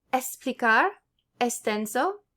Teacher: It's pronounced like S if it's before a consonant.